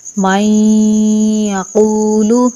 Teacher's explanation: وَمِنَ النَّاسِ مَن يَقُولُ، اب یہ نون کے اوپر جو دال کی شکل میں ہے اس کو ساکن یعنی سکون کہتے ہیں، ٹھیک ہے؟ تو نون ساکن کا یا میں ادغام ہوگا، اور ادغام ہوگا غنہ کے ساتھ، یعنی کہ نون کو یا میں داخل کر کے غنہ کے ساتھ پڑھیں گے۔